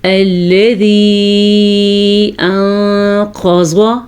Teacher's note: نون ساکن کے بعد قاف حروف اخفا میں سے آیا ہوا ہے تو یہاں پہ اخفا کا قاعدہ ہوگا، قاف کو ہم پر پڑھیں گے، زواد کو ہم پر پڑھیں گے۔